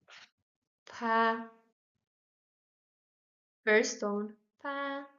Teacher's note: like the English P, but we make air flow through our lips. You can put the hand um before your mouth and feel the air flowing out.